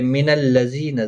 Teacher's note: زی یا مدہ ہے، ایک الف کی مقدار کے برابر کھینچیں گے